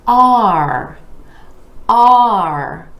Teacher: we have the ah vowel sound moving into the ER are you want to really drop your jaw for that ah